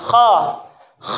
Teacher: satu makhraj yaitu dari ujung-ujung tenggorokan